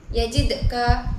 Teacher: terdapat hukum qalqalah sugro pada huruf dal karena huruf qalqalah itu dibaca sukun. Cara membacanya itu dipantulkan dengan ringan.